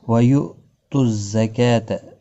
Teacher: حمزہ ساکن کو جھٹکے کے ساتھ پڑھا جائے گا · ساتھ پڑھا جائے گا، زا سختی کے ساتھ پڑھا جائے گا، کاف کے اوپر کھڑی زبر ہے، 1 الف کی مقدار کے برابر کھینچ کر پڑھا جائے گا